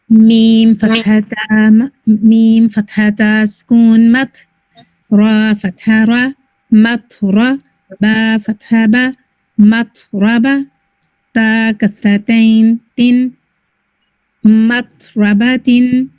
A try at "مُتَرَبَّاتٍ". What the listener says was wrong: The tone تھوڑی سی اینڈ میں move ہو گئی.